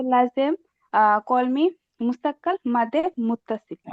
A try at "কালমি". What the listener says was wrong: কিন্তু আপু কলমি না, শব্দটা হচ্ছে কালমি।